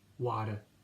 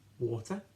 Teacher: the T sound in American English has more of a D sound, whereas in British English it has more of a T sound